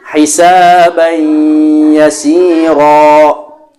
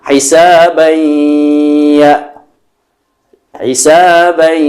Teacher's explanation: Kita perhatikan hukum 2 harokat yang pertama yaitu tajwid idgham bigunnah, di mana nun sukun atau tanwin yaitu an, in, un apabila bertemu dengan salah satu daripada huruf idgham bigunnah yaitu mim, nun, waw atau ya, maka dibaca 2 harokat beserta dengung